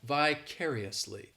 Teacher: has that e sound and the fourth syllable has the schwa